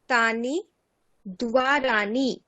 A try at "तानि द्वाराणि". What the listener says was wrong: দ্বারাণী মূর্ধন্য হবে, দ্বারাণী। রকারের পরে সবসময় দন্তান্ন থাকলে মূর্ধন্য হয়ে যায়, মনে রাখবেন।